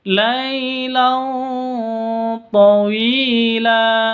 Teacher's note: Tanwin bertemu dengan to, cara bacanya samar, didengungkan,